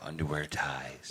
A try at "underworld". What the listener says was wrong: I really think you said it again there. Underwear ties. Are you saying underwear or underworld?